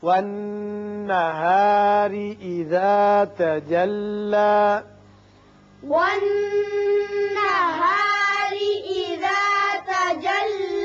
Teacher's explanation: نون مشدد ہے، غنہ ہوگا. را کے نیچے زیر ہے، اس کو باریک پڑھیں گے.